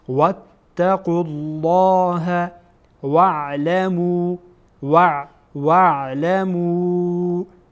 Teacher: لام جلاله اینجا پر خوانده میشه چون که قاف ما قبلش هست، میبینین که پیش داره.